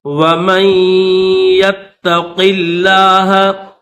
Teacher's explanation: میم کو یا کے ساتھ ملائیں گے اور پھر یا کو تا کے ساتھ ملا دیں گے. یا کے اوپر بھی تشدید ہے اور تا کے اوپر بھی تشدید ہے.